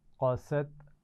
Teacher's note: قاف کو موٹا پڑھیں گے لیکن اس کے بعد سین باریک پڑھا جائے گا